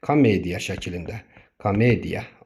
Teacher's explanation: Vurğu ikinci hecadadır. Ona görə birinci o çevrilib olub da a səsi.